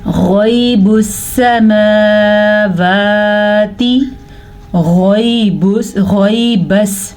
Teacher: غین کو پر پڑھا جاتا ہے, منہ بھر کے پڑھا جاتا ہے